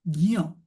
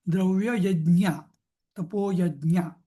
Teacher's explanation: मराठीमध्ये शक्यतो आपण DNY म्हणतो, ज्ञ, ते पण चुकीचं आहे. हां, तो खरा उच्चार काय पाहिजे, ज अधिक य, ज्ञ. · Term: ज्ञचा उच्चार